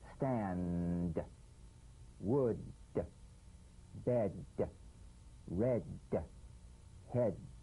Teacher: play this d drumbeat on the springing away of the tongue from the upper gum Ridge heal a pulsation in the tongue yes just tap the drum